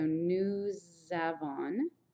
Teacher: Since this ends in an S and this is a vowel, normally you don't say the S, but since the next word starts with a vowel, this little sound will continue over. It's called a liaison, and it's going to be a Z sound.